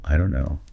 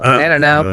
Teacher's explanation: The K in no vanishes. The 2 words melt into a single hum of vowels and a soft N.